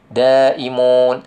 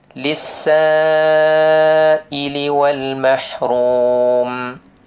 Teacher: Saya suka baca 5 harkat, walaupun 4 boleh. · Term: mad wajib muttasil